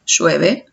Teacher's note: lo cualquiera de los tres casos son tres mensajes distintos y las diferencias no está en la palabra sino está en el volumen con que lo dije